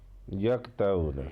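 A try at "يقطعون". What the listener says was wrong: तो वो एक तो ये है कि यक कहेंगे तो वो काफ बन जाएगा, कौफ को मोटा करना है यको। आगे तो को मोटा करना है यको तो रून। अब ऊना को भी आयन है वहाँ, पता है ना आयन के साथ होता है, तो वो बहरहाल आयन की प्रैक्टिस नहीं है, अभी आगे है यको तो रून।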